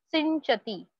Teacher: Jadyam Jyoharati Sinchati Vachi Satyam Jadyam Jyoharati सिंचति यहाँ पे आप देख सकते हो ये जो वर्ड है सिंचति पंच जैसे हम बोलते हैं वैसे ही सिंच ऐसे बोलना है सिंचति दैट इज अनुस्वार दैट ङ जो अनुनासिक है नेजल कॉन्सोनेंट मिक्स्ड विद च